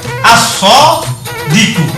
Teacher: Nggak boleh al-shodiku. Artinya bacaan al-nya hilang, dimasukkan ke dalam siddah. Sehingga bacanya as-shodiku. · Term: samsiyah